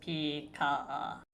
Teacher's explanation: the two long low tones give the word a large feel